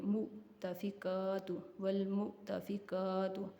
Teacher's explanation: یہاں حمزہ ساکن ہے، حمزہ کو جھٹکا دیں گے، مؤتفکات، والمؤتفکات، قاف کو بھی ایک الف کے برابر کھینچ کے پڑھنا ہے۔